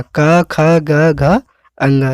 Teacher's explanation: का वर्ग पूरा, का खा गा घा अंगा, ये सब कंठ से बोले जाएंगे